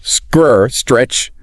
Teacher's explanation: To sound completely natural, you must start with the hissing sound of the S directly behind your teeth. Then immediately tap the T and roll into the R.